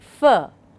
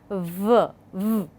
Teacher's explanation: So, here also one is voiced, the other one is voiceless. F would be a voiceless sound and v would be a voiced sound, but both of them, they are labiodentals · these sounds are formed with the upper teeth and then the lower lip. So, 2 things, upper teeth and then the lower lip. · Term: labiodental sounds